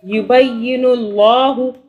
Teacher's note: اللہ کو موٹا پڑا، اللہ سے پہلے پیش آ رہا ہے